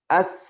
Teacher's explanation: Huruf sin dia rakhawah. Dia lemah. Maka bunyinya mengalir.